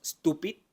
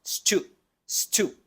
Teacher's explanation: del inglés que Recuerden que es alveolar no dental no decimos Stupid decimos St stu Recuerden que la punta de